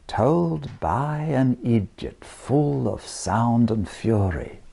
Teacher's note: i give the told a bit of length by drawing out the diphthong told but then place the stress on the by that and